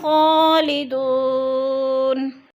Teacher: خالدون، دو وہ ساکن سے پہلے دال کے اوپر پیش ہے تو وہ مدہ کو ہم نے 1 الف 2 حرکات کے برابر لمبا کر کے پڑھنا ہے